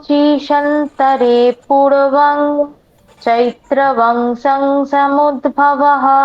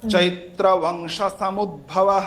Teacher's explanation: হ্যাঁ, একটা হচ্ছে স্বারোচিষেন্তরে পূর্বং চৈত্র বংশ সমুদ্ভব, বংশ বলে দীর্ঘ হয়ে যাচ্ছে, বংশ বলে টান দেওয়া যাবে না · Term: হ্রস্বস্বর